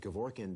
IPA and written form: kɛˈvɔrkiːɛn (Kevorkian)